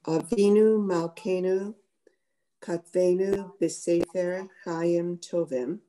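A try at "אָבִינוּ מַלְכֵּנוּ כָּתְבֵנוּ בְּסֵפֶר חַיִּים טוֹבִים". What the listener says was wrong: Avinu Malkeinu Kotvenu. Remember, I talked about the vowel. Nobody's gonna shoot you if you read Katvenu. But if you're going to read it properly, it really has the O sound.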